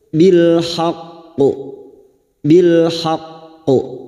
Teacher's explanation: Pada saat memantulkan kita tebalkan bunyi qaf karena huruf qaf huruf isti'la. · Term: qalqalah kubra